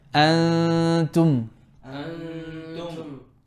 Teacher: two beats of ghunna, drop your tongue, wait for the makhraj of the ta. Wait for the makhraj of the letter that's coming up. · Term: ikhfa